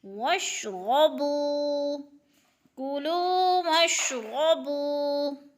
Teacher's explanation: بو پہ وہ مدہ، وہ ساکن سے پہلے با کے اوپر پیش ہے تو وہ مدہ ایک الف کے برابر ہم نے اس کو کھینچ کر پڑھنا ہے ، بو کو، واشربو، کلو واشربو من رزق اللہ، من رزق